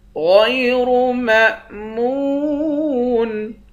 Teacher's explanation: غین اور را دونوں کو موٹا پڑھیں گے۔ میم کو حمزے کے ساتھ ملا کر حمزہ پر جھٹکا دیں گے، میم کو واو کے ساتھ ملا کر واو کو ایک الف کی مقدار کھینچیں گے۔